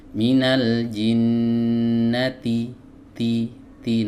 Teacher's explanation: huruf ta ini keluar dari ujung lidah bertemu dengan pangkal gigi seri atas ya. Dan huruf ta ini memiliki sifat hams ya. · huruf ta ini memiliki sifat hams ya. Tapi hati-hati sifat hams ini ee tidak boleh dinampakkan terlalu jelas ya.